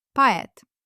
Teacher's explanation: The stress is on e, so o relaxes and sounds like a.